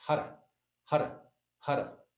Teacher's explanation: the tip of the tongue is hitting the palate behind the teeth each time